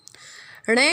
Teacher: ण का उच्चारण स्थान है मूर्धा प्लस नासिका।